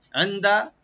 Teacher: আইনটাকে right দিবেন, নুন সাকিন এখানে আমরা ইখফা করব একটু, আর দালে কোনো টান নাই, ওপেন করে পড়বো।